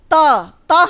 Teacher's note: त हम बोलते हैं तो हमारी जीभ हमारे दांतों तक आती है, और अब दांतों पे बिना लगे त बोलिए, दिक्कत हो रही है ना।